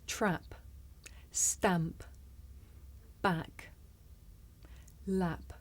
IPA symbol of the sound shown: æ